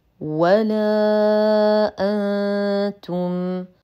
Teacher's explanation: حرف مد ثم الهمز في كلمتين فمد جائز منفصل يمد بمقدار اربع الى خمس حركات